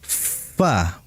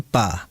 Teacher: Padahal huruf fa itu ada dengan apa? Bibir bawah bagian dalam menempel ujung gigi seri.